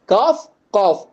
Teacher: ரெண்டுமே அடி நாக்குல இருந்து உச்சரிக்கக்கூடிய எழுத்துக்கள்